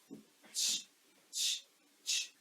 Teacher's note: there is no vibration in our throat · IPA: tʃ